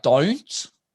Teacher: when Australians say don't, they go like don't, it goes up